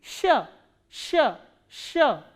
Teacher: Sh is a soft consonant which is produced when your tongue stretches upward and your middle part of the tongue goes upward to the hard palate. Then this sound is produced, sh, sh, sh.